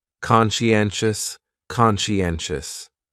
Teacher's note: conscientious has four syllables and the stress is on that third syllable n n conscientious conscientious that second syllable is what really confuses